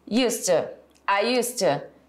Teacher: It doesn't have the D sound after used to.